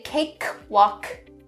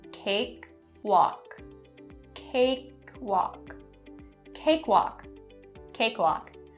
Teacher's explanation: make those K sounds subtle, but still there. So only a little bit of air coming out.